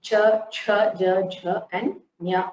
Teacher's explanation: Cha varga are palatals. They are the talavya varnas because they are pronounced with the help of the talu